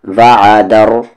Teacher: عین کا مخرج مڈل تھروٹ بیچ والا حلق